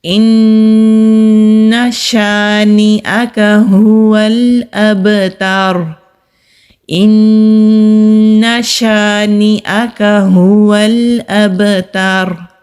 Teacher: تا کو تو کی طرح ادا نہیں کرنا، یہ باریک والا تا ہے · جب را ساکن ہوگا تو اس سے پہلے کون سی حرکت ہے، زبر ہے، تو پھر ہم را کو موٹا ہی پڑھیں گے